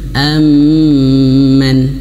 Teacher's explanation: huruf mim yang bertasydid, nun bertasydid, 2 huruf ini mim nun yang bertasydid itu wajib gunnah 3 harokat